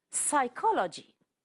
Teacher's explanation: psychology the p is silent